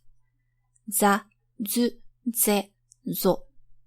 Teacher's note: It's an affricate, so it begins as a stop and releases as a fricative.